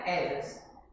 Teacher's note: No inglês britânico, é enfatizada na primeira sílaba